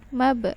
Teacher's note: ba juga huruf qalqalah, maka dipantulkan